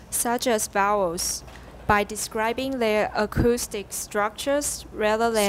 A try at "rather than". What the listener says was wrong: Rather, 你要注意母音后的R, 你有很多R不见了.